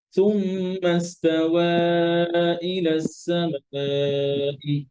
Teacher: ইস্তাওয়া তাওয়াতে মাদ করেন, এখানে ফোর হারাকা মাদ হবে, মাদ মুনফাসিল।